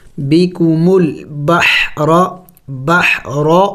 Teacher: دیکھیں ہا حروف حلقی میں سے ہیں، سکون ہے، جم کر کے پڑھیں گے